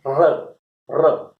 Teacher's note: र है, र, र, इसको लुंठित ध्वनि कहेंगे। लुंठित इसका मतलब जिह्वा, जिसे कहेंगे इस प्रकार, जिसे कहेंगे लुंठित हो जाती है, उल्टी हो जाती है, और जिससे ध्वनि का निर्माण होता है।